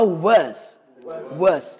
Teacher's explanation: de acordo com a transcrição fonética, a última letra não é S, é um som de Z